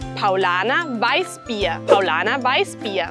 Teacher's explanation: La R al final como una A y la SZ como una S.